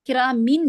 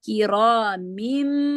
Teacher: کرامین نہیں، دیکھیں تنوین کے بعد با آ رہا ہے نا، تو جو نون کی آواز ہے وہ میم میں چینج ہو جائے گی.